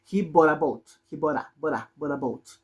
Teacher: Por ejemplo, como en este caso, entre una consonante y una vocal, esa T tiene una cosa que se llama alveolar R y se va a sonar como una R